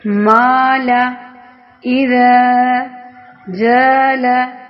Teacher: یہاں الف کی آواز باریک ہے کیونکہ اس سے پہلے والا حرف جو ہے وہ باریک ہے